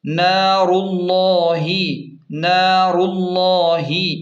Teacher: یہاں تجوید کا خاص قاعدہ ہے، یہاں نارو کی پیش کو اسم جلالت یعنی اللہ کے لام سے ملائیں گے اور اسم جلالت کے لام کو خوب موٹا پڑھیں گے